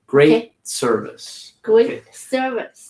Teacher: we're not really pronouncing that T